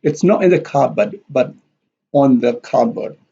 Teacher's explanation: in and on here are stressed because they are contrasted.